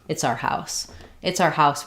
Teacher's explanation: often in fast speech this hour gets reduced just to an R